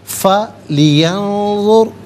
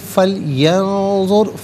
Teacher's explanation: اور ینظر میں نون ساکن، اس کے بعد ذو حرف اخفا ہے تو نون ساکن کو اخفا کے ساتھ پڑھیں گے، ناک میں آواز لے جا کر گنگنانا اسے اخفا کہتے ہیں۔ فَلْيَنظُرْ را ساکن ما قبل ذو پر پیش، را ساکن کو پر کر کے پڑھا جائے گا۔